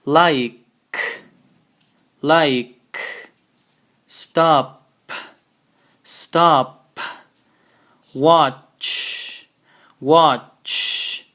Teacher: they don't have a vibrating sound in the end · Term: no vibrating sound